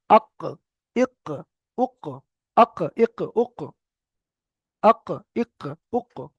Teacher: এটা জিভের গোড়া, আমাদের যে জিহ্বা রয়েছে জিহ্বার গোড়া ওই সোজা উপরে তালুর সঙ্গে লাগবে, লেগে কফ উচ্চারিত হবে।